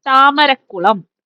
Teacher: ഉദാഹരണം താമരക്കുളം എന്ന തൽപുരുഷ സമാസത്തിലെ ആ പദം നോക്കൂ. രണ്ടാമത്തെ പദമായ കുളത്തിലെ ആദ്യത്തെ അക്ഷരം അതൊരു ദൃഢവ്യഞ്ജനമാണ്, അത് ഇരട്ടിച്ചു. നോക്കൂ, താമരക്കുളം. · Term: ദ്വിത്വസന്ധി